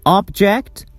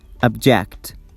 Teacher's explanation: if I stress the first syllable, it's object, and if I stress the second syllable, it is object